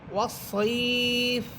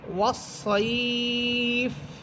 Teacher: অতএব ওয়াসইফ, ফা হরফে যে মাখরাজ আছে, যে উপরের সামনের উপরের 2 দাঁতের আগা নিচের ঠোঁটের পেটের মাঝখানে লাগবে